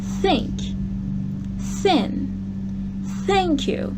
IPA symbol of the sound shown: θ